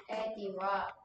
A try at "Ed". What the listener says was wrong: 에디는 아니고 에디는 이렇게 써야지. 그냥 에드.